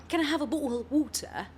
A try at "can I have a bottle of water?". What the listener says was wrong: It's not tea. They don't say the tea.